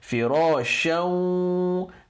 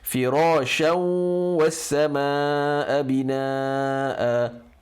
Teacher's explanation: The n sound of the shan totally disappears and you merge it into the next letter, which is waw. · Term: idgham with ghunnah